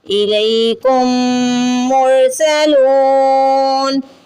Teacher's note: میم پہ تشدید ہے، آپ کو یہاں پہ غنہ کرنا ہے